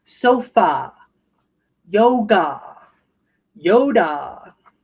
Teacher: the a will often say ah at the end of a word as well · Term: broad a